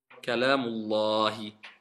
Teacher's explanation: On écrit le alif, mais on n'écrit pas et on ne prononce pas la hamza. Donc je vais dire Kalamu Allah ou Kalamullah.